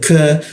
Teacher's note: Huruf K di sikut tenggorokan. lidahnya kita turunkan sehingga ada hembusan udara ketika membaca huruf K seperti itu. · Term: huruf ka